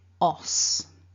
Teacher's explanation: we've got a short o vowel and the unvoiced s so together that's us so bringing it all back together remember